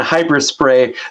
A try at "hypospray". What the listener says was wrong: It's hypo spray. It sounded like hyper spray, so hypo spray.